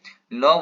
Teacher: तो ल वर्णक उच्चारण स्थान दंत